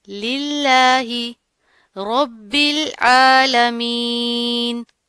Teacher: را کے اوپر زبر ہے، پر کر کے پڑھیں گے، موٹا پڑھا جائے گا. با کے اوپر تشدید آ رہی ہے، سختی سے پڑھیں گے، اور اس با کو ہم اس جوڑوں کے لام کے ساتھ ملائیں گے. · للہ اس طرح نہیں پڑھنا، ٹھیک ہے؟ یہ والا جو ہا ہے یہ ہمارا حلق کے نیچے والے حصے سے جو سینے کے قریب ہوتا ہے ادھر سے ادا ہوگا